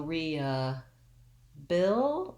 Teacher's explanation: bill is my stress syllable that's where i want to have my length i do have the lacs vowel there but it'll be longer